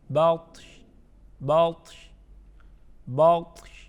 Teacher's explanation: طا کو بھی پڑھیں گے اور شین کو بھی ساتھ میں پڑھیں گے بطش، لیکن شین پر ہم حرکت نہیں پڑھیں گے. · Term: وقف